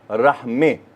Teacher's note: अब इमाला क्या है कि आपने ज़ेर और ज़बर के दरमियान का कुछ पढ़ना है